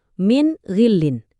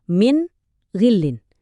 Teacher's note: Waktu nun sakinah atau tanwin ketemu huruf-huruf tertentu, kita harus baca bunyi en-nya dengan jelas dan tegas. Nggak pakai dengung · Bunyi N di kata min itu jelas banget, nggak ada samar-samar. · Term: izhar